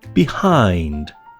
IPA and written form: bɪ.ˈhaɪnd (behind)